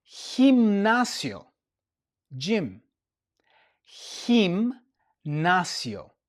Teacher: So you see the g and the e and the g and the i have changed to h sounds.